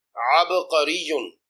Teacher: با مجزوم ہے اور حرف قلقلہ ہے، اس لیے با پر قلقلہ کریں گے۔